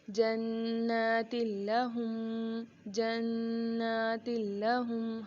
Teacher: یہاں پر تنوین کے بعد جو لام آ رہی ہے ہم نے تا کو لام سے ملا دیا ہے، لیکن ہم نے یہاں پر غنہ نہیں کیا ہے